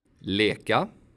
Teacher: The e sound is something in between i and ä. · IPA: [eː]